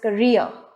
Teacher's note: And the stress is on the second syllable re, so it would sound as career.